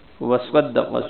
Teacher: صاد کو موٹا پڑھنا ہے اور قاف کو بھی موٹا پڑھنا ہے